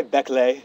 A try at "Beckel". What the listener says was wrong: Hey, it's Beckel. The Y is silent.